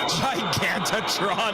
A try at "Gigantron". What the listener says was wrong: Gigantron? you added a syllable.